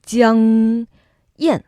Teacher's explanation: when we have the G, we're using a nose a little bit